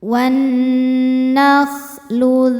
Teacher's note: Alif lamnya dinamakan dengan alif lam syamsiyah karena alif lam menghadapi huruf syamsiyah yaitu nun, maka alif lam tidak dibaca ya. Nunnya gunnah musyaddadah karena nun bertasydid, cara bacanya didengungkan.